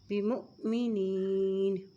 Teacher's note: حمزہ کے اوپر جزم آ گئی ہے، تو اس کو ہم جھٹکے سے پڑھیں گے